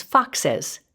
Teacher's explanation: suffix es then instead creates a buffer vowel between those two sibilants or hissing sounds